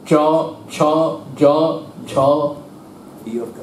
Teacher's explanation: চ ছ জ তাকে বলে ঘৃষ্ট ঘষে বন্ধ হবে ঘষে বের হবে চটা খানিকটা ত আর তালব একসঙ্গে মিশে চ ছ জ ঝ